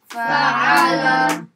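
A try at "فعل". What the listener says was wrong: You don't have to put so much emphasis on the ayn, just enough that it's actually an ayn. So don't put so much force on it. Fa'ala, like that, is too much. Turns into a mistake, just normal. Fa'ala.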